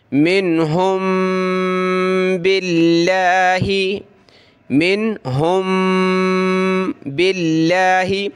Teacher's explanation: میم ساکن کے بعد با آ جائے تو ہم نے وہاں ناک میں آواز پیدا کرنی ہے